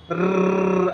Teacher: आपला र चा उच्चार करताना काय होतं आवाजाचं कंपन होत असतं